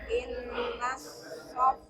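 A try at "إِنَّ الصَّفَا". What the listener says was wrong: Ah, enggak ada tasdid. Inna sofa.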